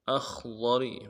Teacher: من الشجر الاخضر، حمزہ کو خا کے ساتھ ملانا ہے، خا کو موٹا ادا کریں گے اور ضاد کو موٹا ادا کریں گے، را کو باریک کریں گے